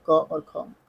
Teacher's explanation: कंठ ध्वनि है क और ख